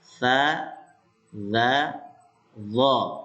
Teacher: ujung lidah dengan pangkal dua gigi yang ada di atas.